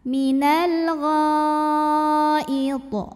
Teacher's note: Karena huruf to sukunnya tidak asli ya, melainkan kita sukunkan dan berada di akhir bacaan kita. Maka dibacanya memantul dengan pantulan yang besar. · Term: qalqalah kubra